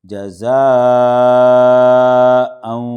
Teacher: مد متصل ہے کہ 5 الف کے برابر یہ کھینچا جائے گا